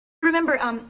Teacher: To pronounce remember, have in mind that the size of the syllable indicates where the accent or stress is. In this case, the accent is in the second syllable, corresponding to mem.